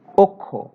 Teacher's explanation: ক্ষীয় যদি শব্দের শুরুতে থাকে তাহলে খ এর উচ্চারণ হয়, তবে মাঝখানে এবং শেষে থাকলে, এখানে শেষে মানে অ এর পরে, তাহলে প্রথমে আমরা পাবো ক এবং পরে পাবো খ। প্রথমে অঘোষ অল্প প্রাণ ক এবং পরে হচ্ছে অঘোষ মহাপ্রাণ খ এর উচ্চারণ পাবো